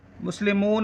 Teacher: مسلمون میں واو حرف مدہ ہے، اس کے بعد نون پر وقف کی وجہ سے سکون آ گئی ہے، عارضی سکون ہے تو یہاں مد عارض ہوگا.